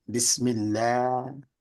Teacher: Some people say Bismillah with a lighter kind of vowel on the A, Bismillah, like at, that, cat.